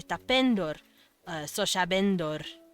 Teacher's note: They just kind of naturally inflect the next to last syllable, which would be ben.